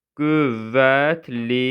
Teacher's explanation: Qüvvətl formasına tələffüz olunur. Yəni R düşür.